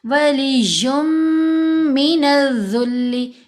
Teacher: یم لمبا کیا نا، اسٹریچ کیا 2 حرکات کی مقدار، تو یہ غنہ کیا